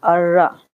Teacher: यहाँ पर नून की आवाज नहीं आएगी, क्यों? क्योंकि यहाँ पर बगैर गुन्ने के इदगाम होगा